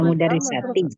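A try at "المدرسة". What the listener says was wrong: madrasati. Memang mirip ya, harokatnya kan nggak ada nih. Tulisannya sama antara al-mudarrisah dengan al-madrasah.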